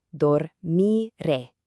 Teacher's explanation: you really want to lean into that strong accented final syllable